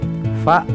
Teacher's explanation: gigi kita bagian atas menyentuh bibir kita bagian bawah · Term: huruf Fa